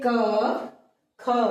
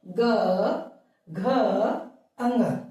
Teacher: जब हमने ग घ अ ङ बोला तो हमारी स्वर तंत्रियों में कंपन हुआ या गूंज उत्पन्न हुई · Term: घोष वर्ण